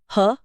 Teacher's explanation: ह की ध्वनि सीधे कंठ के भीतर से काकल्य से आती है। इसलिए इसे काकल्य व्यंजन कहते हैं।